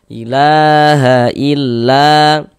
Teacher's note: Karena di sini ada alif, sebelumnya ada harokat fathah nih. Nah, maka huruf yang memiliki harokat fathah ini dibaca panjang, sehingga la dibaca panjang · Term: Mad tabi'i